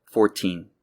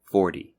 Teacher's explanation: The difference is that numbers in the teens are pronounced with a T sound, but multiples of 10 are pronounced with almost a D sound. So it's 14 and 40.